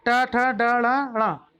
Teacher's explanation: अब इसके अलावा क्या क्या होता है, मूर्धन्य होता है। मूर्धन्य का मतलब होता है मुर्दा, मुंह के भीतर की छत का अगला भाग। इसमें टा, ठा, डा, ड़ा, णा, ये सब होता है।